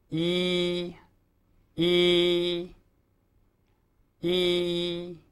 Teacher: This is made by raising the rear part of the tongue and relaxing the front of the tongue while you relax the lips. Sometimes the lips are drawn slightly to the side.